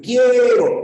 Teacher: En quiero, la U no suena, solamente tienes una I con una E. Quiero, y la fuerza de voz está en la E. Diptongo.